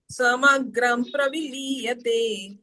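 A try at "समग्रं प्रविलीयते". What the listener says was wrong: ಯು are reciting different tune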